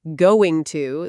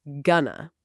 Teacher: You'll notice that English speakers connect words. Instead of going to, they say gonna.